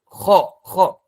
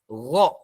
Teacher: Kalau kha udara mengalir, kalau ghain udaranya tertahan. Gha. Enggak boleh ada udara yang keluar.